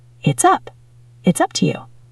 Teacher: It's ends in an S sound. Up starts with a vowel. We link them.